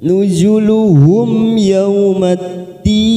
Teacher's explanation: Nuzuluhum idhar safawi, mim sukun bertemu ya, idhar safawi kita baca jelas tanpa mendengung